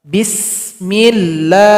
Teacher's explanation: lafaz Allah ini dipanjangkan 2 harokat saja, tidak boleh lebih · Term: dua harakat